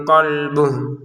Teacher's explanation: Nah qolbuh di sini pendek karena kita berhenti walaupun ada wau kecil di sini.